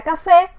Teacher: es una palabra aguda lleva la mayor fuerza de voz en la última sílaba que es fe y se tilda porque termina en vocal ahora